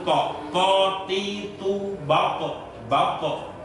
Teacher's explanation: ujung lidah ditempelkan ke akar gigi tengah yang atas, ke gusi yang atas itu · Sedangkan sifat itobak tadi artinya apa? Itobak artinya ujung lidah menempel ke langit-langit yang atas. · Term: huruf to